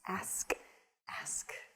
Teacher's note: it's reversing the consonants in the word ask